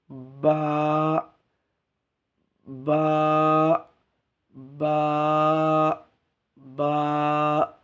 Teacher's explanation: ঠোঁটের যে শুকনো অংশ এখান থেকে লেগে বা বেরোবে।